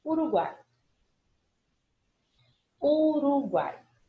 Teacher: U, A, I. Eu tenho semivogal, vogal e semivogal. Portanto, eu tenho tritongo